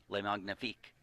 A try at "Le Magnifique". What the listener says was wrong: Make that G a little silent. Le Magnifique.